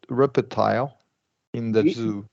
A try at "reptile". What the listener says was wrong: Good, but don't release that P.